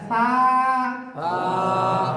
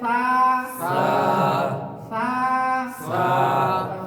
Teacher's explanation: রাল, এই জিহ্বার আগা দাঁতের আগা, জিহ্বার আগা দাঁতের আগা। হ্যাঁ সা, জিহ্বার আগা দাঁতের আগের সাথে লাগাইয়া বলেন। নরম এবং পাতলা